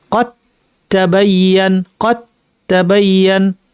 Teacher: এখানে দাল বিলুপ্ত হয়ে যাবে, দাল না থেকে সেখানে তা আসবে, দুইটা তা একসাথে হয়ে তাসদিদযুক্ত তা বানিয়ে পড়তে হবে। কদ তাবাইয়ান না পড়ে আমরা পড়বো কদ তাবাইয়ান, কদ, কদ সরাসরি তাতে চলে এলাম, কদ তাবাইয়ান, কদ তাবাইয়ান।